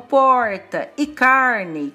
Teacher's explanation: No interior de São Paulo, palavras como porta e carne, com esse R bem puxado, chamado R retroflexo